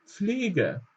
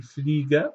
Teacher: es wird fast wie ein F ausgesprochen, aber wir bekommen noch leicht dieses P mit